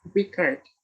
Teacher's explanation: The word stress is on the second syllable.